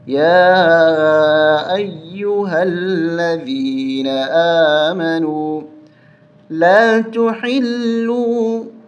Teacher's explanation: اس یا کے اوپر ایک کھڑا زبر ہے اور چھوٹی مد ہے، اس کو کھینچ کے پڑھیں گے 3 الف تک